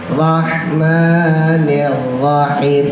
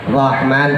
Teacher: h-nya tipisin Bu rahmanirahim sama dua-duanya H tipis Ya Rahman tipis rahim juga tipis